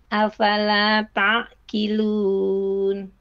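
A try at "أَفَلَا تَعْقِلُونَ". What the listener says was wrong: Untuk huruf qafnya Ibu, afala ta'qilun ya. Tadi terbaca afala ta'qilun. Bedanya kalau yang terbaca tadi itu agak ke depan makhrajnya, sehingga lebih ke huruf kaf. Ketika dibaca afala ta'qilun, ki itu kaf, makanya agak mundur. Jadi makhraj huruf qaf dia ada di lidah paling belakang, pangkal lidah. Kemudian terangkat, kemudian menempel pada langit-langit yang lunak yang belakang.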